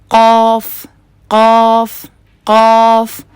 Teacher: काफ काफ काफ और अब अगर कर्व ना हो काफ का क तो देखिए मेरा होठों को मैं गोल नहीं कर रही ये जो बीच में ओ की आवाज आ रही है ये इसीलिए आ रही है क्योंकि जुबान को पीछे से उठाने के साथ-साथ मैं जुबान के बीच में कर्व भी ला रही हूं।